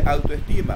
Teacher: Autoestima tiene acento en la penúltima, ya es grave.